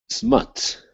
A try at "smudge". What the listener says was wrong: With the J at the end. Smudge.